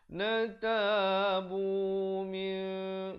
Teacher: Tapi bila datang ba ditukarkan kepada bunyi mim. Bunyi mim, tetapi mim yang nipis. · Mim itu bibirnya itu sekadar hampir bersentuhan di antara atas dengan bawah begitu saja. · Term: hukum iqlab